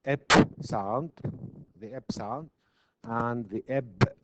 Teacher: the eb and to make the oral closure complete or closure we use both lips so we call it bilabial so it is a stop it's a stop sound it is